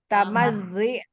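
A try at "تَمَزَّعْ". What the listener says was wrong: tamadza'. Nggak boleh kasro kalau amalannya tamadza'.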